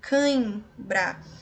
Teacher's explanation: nós temos a letra M letra n é veja só canhinbra nós temos um som nasal é um ditongo nasal decrescente eu tenho primeiro vogal depois a semivogal tá com o ar